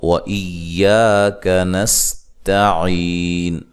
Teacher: سین کو باریک سیٹی سے، تا کو باریک پڑھنا ہے، یا مدہ ہے، وقف کی صورت میں مد کر سکتے ہیں.